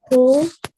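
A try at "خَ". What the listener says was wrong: Kho. Pesh not. Kho zabar. Kho zabar.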